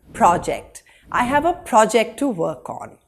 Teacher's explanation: when the word is used as a noun the first syllable is emphasized